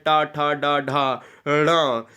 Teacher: ये मूर्धन्य है, ये मूर्धन्य स्पर्श व्यंजन है